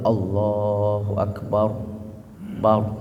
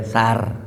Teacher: rnya mati tuh sebelum roh harakatnya fathah maka hukum bacanya tafkhim tebal